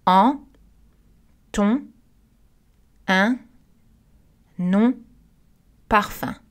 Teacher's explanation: Regardez la première liste, nous avons des voyelles nasales parce que N et M sont à la fin du mot. Les N et M ne sont pas prononcés.